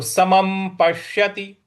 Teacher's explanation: प के बाद जो बड़ा श है आधा है उस पर हमको आघात देना है